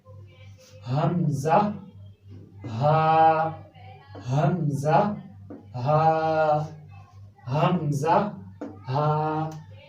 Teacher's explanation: ये बिल्कुल जो गले का एंड है, जो बिल्कुल सीने के करीब है मेरे, इधर से अदा हो रहा है।